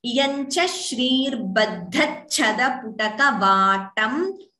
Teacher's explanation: dha is mahaprana. Then cha is also mahaprana